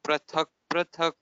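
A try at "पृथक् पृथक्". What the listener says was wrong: Yeah, prithak prithak. So all of you, please note this is r. So like we say ritu, ritavaha, seasons, ritavaha, krishnaha, all those, kripa, this is r, not pra. So that is one thing to be kept in mind.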